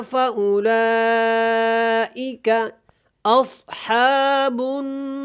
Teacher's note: یہاں پہ غنہ کریں گے اور را کو جب پڑھنا ہے وقف کی صورت میں تو اس کو موٹا پڑھیں گے کیونکہ اس سے پہلے والے لفظ کے اوپر دیکھیں گے تو زبر ہے